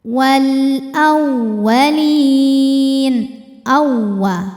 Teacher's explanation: Cara membacanya lam dibunyikan dengan jelas atau dinamakan dengan izhar qamari.